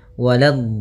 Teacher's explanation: la-nya jangan sampai tebal, jangan waladh, tapi la-nya tipis. Waladh. Baru di dotnya yang tebal.